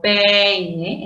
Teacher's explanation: Entonces, si yo tengo, por ejemplo, peine, el acento está en la vocal abierta, E